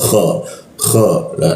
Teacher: kho masuk ke atas jakun ya ko k nah kita matikan di sini ketika kita matikan k bertemu ya dan ro dua huruf mati ketika ketika dua huruf dimatikan maka seolah-olah muncul bendera kita panjangkan kan tiga ketukan khair seperti itu.